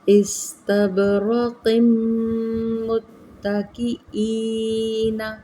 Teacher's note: استب با پر قلقلہ، استب را کو پر پڑھیں گے، استبرقم، تنوین کو میم مشدد کے اندر ہم ادغام کریں گے